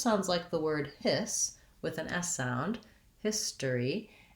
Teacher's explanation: this has first syllable stress and the stress is on the his part so it just sounds like the word hiss with an s